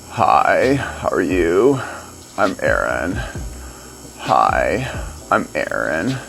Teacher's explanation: I got too much grip in my fry. It's got to be freer than that.